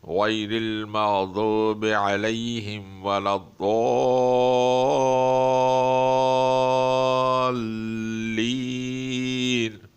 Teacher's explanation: اس الف کے بعد حرف مشدد لام پر شد آ رہی ہے، اس لیے اس کو کھینچا جائے گا 5 سیکنڈ کے برابر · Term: مد لازم